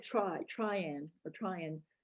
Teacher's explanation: there's a lot more reduction in try and more fusion with and in that particular example